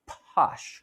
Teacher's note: And she would let the lips kind of part and then let the vocal folds vibrate late.